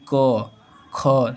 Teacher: एक अंगुली रखकर देखिए बोलिए क ख देखिए कंपन नहीं होगा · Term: अघोष